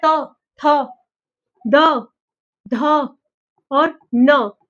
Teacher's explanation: जो जीभ होगी वो दांतों को छू के जाएगी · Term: दंत्य